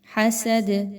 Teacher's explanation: دال پر جزم لگاتے ہوئے قلقلہ کریں گے